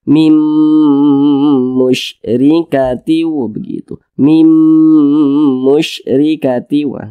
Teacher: Jangan dibaca Min tapi langsung masuk ke huruf mim dibaca Mim diunahkan dipanjangkan suaranya kita tahan kita panjangkan dua harakat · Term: idgham ghunah